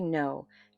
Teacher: When you say no, you're making 2 very distinct sounds. First, the N, the nasal front of the mouth sound. Then the O, that long rounded vowel.